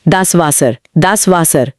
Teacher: German का डब्ल्यू असल में अंग्रेजी के वी यानी हिंदी के व की ध्वनि देता है। तो वी और डब्ल्यू की ध्वनियां आपस में बदल जाती हैं।